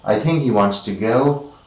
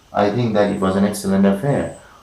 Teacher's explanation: all these 3 sentences are uttered in the equal time because we have 3 stressed or accented syllables in each of the sentences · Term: rhythm